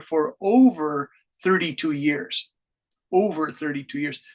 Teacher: you really put stress on that over because it's time